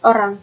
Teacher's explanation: O dengan bunyi belakang sedang bulat